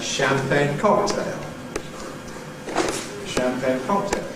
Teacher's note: It’s double-stressed: <ˌchamˈpagne> [ˌʃæmˈpeɪn].